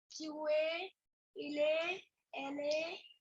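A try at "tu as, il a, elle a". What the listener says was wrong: Okay, so slight mistake in the pronunciation. The second half was correct. First half sounded like être, not avoir.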